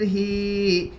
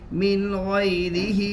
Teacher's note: ہا کے نیچے کھڑی زیر ہے, کھڑی زیر برابر ہے یا مدہ کے, اس لیے کھڑی زیر کو ایک الف کے برابر کھینچ کر پڑھے